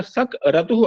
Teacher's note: ककार के उत्तर में यति होने पर सक रतु ऐसा उच्चारण होता है